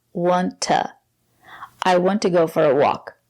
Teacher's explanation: to is not stressed. We pronounce it as ta, want to.